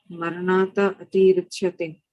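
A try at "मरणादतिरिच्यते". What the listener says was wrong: You don't have to break there. Maranad atirichate.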